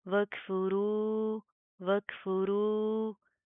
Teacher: रो को प्रॉपर मुंह को पुर करके पढ़ेंगे, मोटा पढ़ा जाएगा